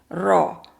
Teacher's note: जुबान जो है ऊपर के दांतों के अंदर की तरफ लग रही है। यानी कि मसूड़ों के हार्ड जो एरिया है सख्त पैेट जो है उसको लग रही है।